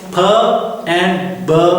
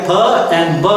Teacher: As we have discussed, two sounds p and b, like p and b, th and d both are stop. In p and ba, we use our both lips to stop the air